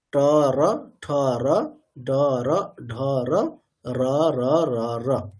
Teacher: রকারের উচ্চারণ স্থান যেহেতু মূর্ধা, তাহলে ওটাকেও ট ঠ ড ঢ যেখান থেকে বলছি সেখান থেকে বলতে হবে।